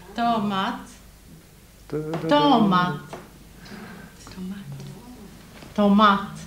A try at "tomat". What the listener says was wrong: Tomat. Tomat. Betoning på den andra stavelsen. Och intonation. Tomat.